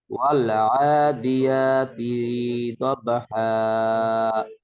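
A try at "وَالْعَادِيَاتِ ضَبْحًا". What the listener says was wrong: তিনটা টান নাই, টান নাই। ওয়াল আদিয়াতি দবহা।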